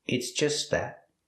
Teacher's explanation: The T in just is a stop T, but you don't really hear it because it's between consonants.